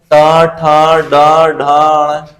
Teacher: वाले दांत का जो मसूड़ा होता है उसको मूर्धा बोलते हैं अंदर की तरफ ऊपर वाले दांतों का मसूड़ा अंदर की तरफ उसे मुर्धा बोलते हैं